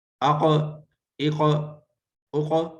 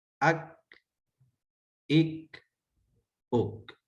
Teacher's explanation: قاف یہ نرم تالوں پہ لگے گی اور کاف باریک تالوں کو لگے گی · اقصی لسان جب نرم تالوں کو حلق کی جانب لگے گی تو قوف نقطوں والا، اور جب اقصی لسان سخت تالوں کو منہ کی طرف لگے گی تو باریک کاف ڈنڈے والا کاف